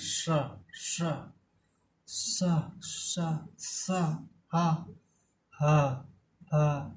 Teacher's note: ऊष्म व्यंजन ये इसलिए कहे जाते हैं क्योंकि जब हम श कहते हैं, श, तो जो हमारे मुख से हवा निकलती है, वायु निकलती है, वो गर्म होकर निकलती है, रगड़ के निकलती है, रगड़ते हुए श श स स स हा हा हा ऐसे करते ना। · मुख से जो वायु निकलती है वो रगड़ते हुए, घर्षण करते हुए निकलती है